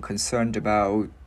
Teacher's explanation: Chữ D luyến qua chữ O nhẹ luôn